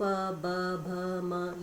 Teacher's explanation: ये सारे वर्ण जो निकल रहे हैं ये होठों की मदद से निकल रहे हैं स्पर्श करते हुए।